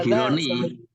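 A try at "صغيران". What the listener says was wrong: sogi, Roni gitu Pak, tolong dibaikin ininya, nggak Sogironi, nggak seperti itu. Tolong, kita penting panjang pendeknya ini penting karena bisa tahu artinya udah beda.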